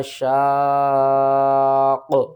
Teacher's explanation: قاف کو آپ نے موٹا کر کے بھی پڑھنا اور قاف کے اوپر قلقلہ بھی کرنا ہے